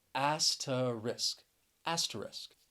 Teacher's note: but the word does have three syllables and you you really you gotta really listen for that second syllable with the schwa